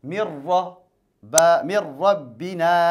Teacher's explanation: ربنا نون تنرى كسر الجنة من را ندغم النون في الراء نون الساكنة أتى بعدها راء الراء من حروف الإدغام إذن ندغم النون في الراء